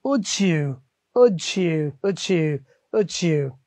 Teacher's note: দেখুন এখানে ডি দিয়ে শেষ হয়েছে, ওয়াই দিয়ে শুরু হয়েছে, তাহলে ডিটা বাদ দিয়ে ওরা এখানে জ, বর্গীয় জ দিয়ে দিলাম